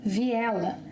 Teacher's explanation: When speaking, we link vi and ela. Vi ela. And this combination sounds like another word.